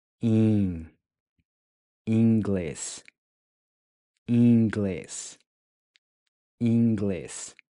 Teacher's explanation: with the IN, we have a nasal ing sound, which sounds like ing, except you don't quite finish pronouncing the G.